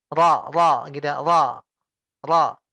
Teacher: Kalau ro itu digetarkan, dikasih getaran. Dalam bahasa Arab disebut takrir.